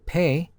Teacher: If you hold your hand slightly below your mouth and say pay, you will feel aspiration. Burst of air right after P sound. The sound this consonant make is voiceless, just like English P, but more aspirated.